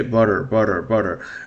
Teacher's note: the American pronunciation tends to soften the t or shorten the t